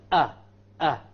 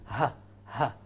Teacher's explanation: the lowest part of the throat, we have 2 sounds or 2 letters coming, that of the hamza and that of the ha. Hamza, a, and the ha, ha. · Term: letters of the throat